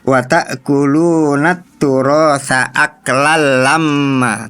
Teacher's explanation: Tadi dibaca aklal lamma ya. Idgham bila gunahnya terlalu ditahan. Harusnya tidak dibaca gunah.